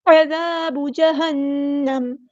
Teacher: عذاب جہنم، عین کو وسطی لیکن مڈل تھروٹ سے ادا کرنا ہے، زال باریک نرمی سے ادا کریں گے